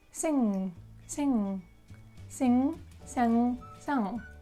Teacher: with the word sing, you don't touch your upper teeth and you kind of like block your throat, and the sound should go through the nose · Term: nasal sound